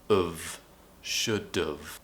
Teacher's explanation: And what's happening is when we do this we say should've. So we're pronouncing it with a schwa and then a v sound.